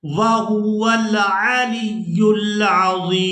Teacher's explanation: وقف کریں گے تو وقف کی صورت میں میم جو ہے یہ ساکن ہو جائے گی. ضا کو یا ساکن اور میم ساکن کے ساتھ ملا کر ادا کریں گے.